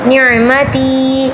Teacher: یا کے پیچھے زیر آیا، اس کو تھوڑا سا کھینچ کر پڑھیں گے